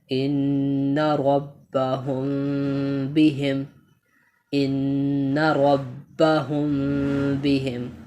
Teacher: با کے اوپر تشدید ہے تو با کو سختی کے ساتھ اور با کو 2 دفعہ پڑھیں گے